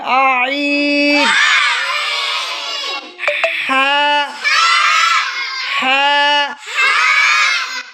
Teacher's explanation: 2 number মাখরাজ হলকের মধ্যখান হইতে আইন হা, আইন গলায় চাপ দিতে হবে।